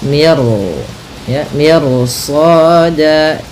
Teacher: Maka miru ya, miru soda, tidak mir soda, tidak dibaca, jangan dibaca kanat mir soda, tapi dia ro-nya tebal